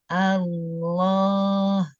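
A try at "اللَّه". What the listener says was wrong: Tebarkan. Allah, ini juga masih menekan lidahnya. Fathahnya sempurnakan, buka mulutnya. Ujung lidahnya naik. Ujung lidah naik. tekan. Ini tekan ke bawah. rahangnya jangan ikut naik. Ujung lidah saja yang naik. Ujung lidah saja yang naik. jangan digigit. Jangan gigit. Rahang saya nggak naik. Rahang saya nggak.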